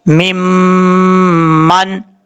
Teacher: میم کے اوپر شد ہے، غنہ کریں گے ایک الف کی مقدار